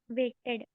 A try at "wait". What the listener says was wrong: और waited नहीं होता, wait होता है. Waited नहीं, wait. Wait करने को क्या बोलते हैं? Wait. There's no T here. So wait.